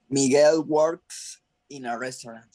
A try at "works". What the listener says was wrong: Miguel works in a restaurant. En este caso, in this case, works is a clear S without any Z. No, it's works. Okay, no vibration, no vibration. Okay, no zoom, no zoo, no, no, no.